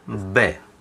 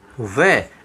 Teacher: अगर बै आता है तो इसका उच्चारण केवल क्या होगा, ओष्ठ होगा। और यदि वै आता है तो यहाँ दांत और ओष्ठ अर्थात दंत ओष्ठ ये स्थान हमारे यहाँ पर काम आएगा। तो सूत्र है हमारा वकारस्य दंतोष्ठम, क्योंकि वै का उच्चारण स्थान करते समय हमारे दांत और होठ दोनों काम में आते हैं, इसलिए इसका उच्चारण स्थान है दंतोष्ठ।